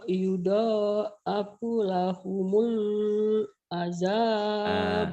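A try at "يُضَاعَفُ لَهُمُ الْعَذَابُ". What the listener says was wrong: Lahumulnya jangan panjang. Lahumul ada alif lam komariah. Idhar komari. Yudha'afu lahumul azab. Yudha'afu lahumul azab. Yudha'afu lahumul azab.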